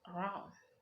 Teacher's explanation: Occurs when the stress always falls clearly in the last syllable and the first syllable is weak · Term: primary level